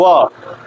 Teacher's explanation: व का जो उच्चारण है दंत और ओष्ठ मतलब दांत और ओष्ठ दोनों से हो रहा है। व इसमें जो है थोड़ा ये ओठ जो है जुबान इससे टच होकर के बाहर की तरफ आ रही है। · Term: दंतोष्ठम